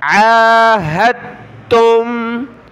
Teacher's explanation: عین کے اوپر یہ کھڑا زبر ہے، ایک الف کی لمٹ میں اس کو کھینچیں گے